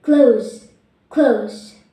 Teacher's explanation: Z, voice, alveolar, fricative